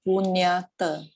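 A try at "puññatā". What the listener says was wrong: Not punya. NYA is incorrect.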